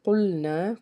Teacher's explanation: قاف کو ہم پر پڑھیں گے کیونکہ حروف مستعلیہ کا حرف ہے، پیچھے زبر ہے، اس لیے یہاں پہ ایک الف کے برابر اس کو کھینچ کے ادا کریں گے۔